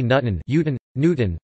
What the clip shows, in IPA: ˈɲutn̩